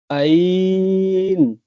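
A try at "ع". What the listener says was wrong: अभी हमजा हो गया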